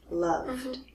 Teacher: So what if I do love becomes loved? And again, it's voiced, so it sounds like D.